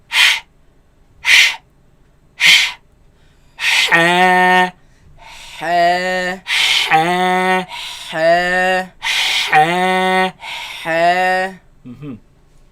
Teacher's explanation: this epiglottis moves against the back of the throat, leaving a very narrow passage, a very tight passage from which the air passes through. And that is what produces this sharp sound.